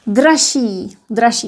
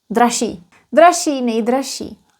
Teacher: because of regressive assimilation, ž becomes sh, and then that double sh is not pronounced as double sh, just one sh